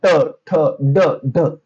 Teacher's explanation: आता जीभ जी लागते बघा, तुम्ही आरशामध्ये प्रॅक्टिकली करून बघा. जीभ जी आहे ना थोडीशी दुमटली जाते आणि ती मागे लागली जाते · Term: मूर्धन्य